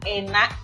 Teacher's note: ketika bunyi K atau konsonan K ini muncul di posisi akhir, maka ia cenderung dibunyikan sebagai glottal stop. Ya, glottal stop itu bunyi yang berhenti di antara celah suara, begitu ya, glottal stop.